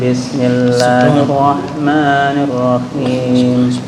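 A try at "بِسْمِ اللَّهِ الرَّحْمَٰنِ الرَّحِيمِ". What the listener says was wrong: Bismillah untuk ra-nya tafhimnya kurang. Boleh diulang.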